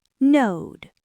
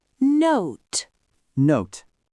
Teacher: It's a long, stretched vowel. That's 'cause it ends in a voiced D sound.